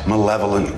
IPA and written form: məˈlev.əl.ənt (Malevolent)